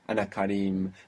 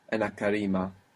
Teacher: There's a long vowel on Karim, Ana Karim. And you made it shorter when you put the A